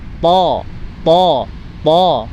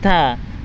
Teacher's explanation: Ketika pangkal lidah naik ke atas, to, jadi tebal.